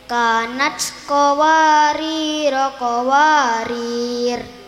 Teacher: Jika wakof di ro yang kedua ro-nya dibaca sukun.